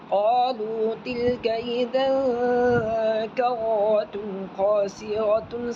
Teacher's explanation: یہ تا دو پیش تن کو صاف پڑھیں گے، اس میں گننا نہیں ہوگا، اس میں اظہار حل کی.